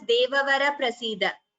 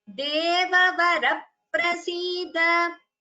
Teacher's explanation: If you can make out the difference, when I say Devavara prasida and Devavara prasida, so there is an extra p heard here between ra and pa, that is dvitvam, a rule of pronunciation.